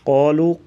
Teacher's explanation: قالوا قاف کو پر پڑھیں گے موٹا، اور یہ جو واو ہے واو مدہ ہے، اسے 1 الف کے برابر لمبا کر کے پڑھا جاتا ہے حروف مدہ کو۔